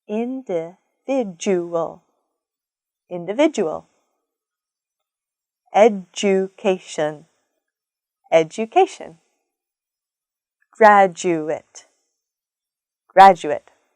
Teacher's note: DU letter pattern makes the J sound, that short J puff of air sound. Individual, individual.